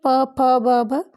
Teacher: तो दोनों ओष्ठ की सहायता के बिना ये बोले ही नहीं जा सकते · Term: ओष्ठ व्यंजन